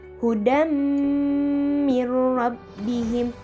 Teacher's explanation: Idgham yang memakai gunnah ke hidung. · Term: idgham bi gunnah